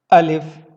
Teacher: الف آپ کے منہ کے خالی حصے سے ادا ہوتا ہے۔ اس کو پڑھتے وقت آپ نے کوشش کرنا ہے کہ آپ نے اپنی زبان کو منہ کے خالی حصے میں رکھیں گے، بالکل درمیان میں، ٹھیک ہے، اور بغیر کوئی زور لگائے ہوئے آپ اس کو آرام سے ادا کریں گے۔